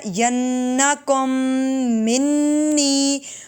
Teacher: دیکھیں حمزہ ساکنہ جھٹکا دے کے پڑھیں گے یا، اس کے بعد ینا پہ غنہ، ینکم منی، 2 مرتبہ غنہ، نون مشدد اور میم مشدد